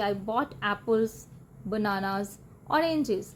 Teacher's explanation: ਪਹਿਲੇ ਦੋ ਆਈਟਮਸ 'ਚ ਆਵਾਜ਼ ਉੱਪਰ ਜਾਂਦੀ ਹੈ, ਅਖੀਰ ਵਿੱਚ ਆਵਾਜ਼ ਥੋੜੀ ਜਿਹੀ ਨੀਚੇ ਜਾਂਦੀ ਹੈ ਕਿਉਂਕਿ ਲਿਸਟ ਕੰਪਲੀਟ ਹੋ ਗਈ ਹੈ।